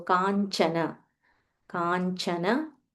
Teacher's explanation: there is a half nya and a cha